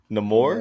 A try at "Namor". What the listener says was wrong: Yeah, it's not the long A anymore. It's like the roll the R at the end.